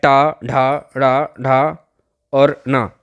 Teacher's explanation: टा वर्ग का उच्चारण मूर्धा से होता है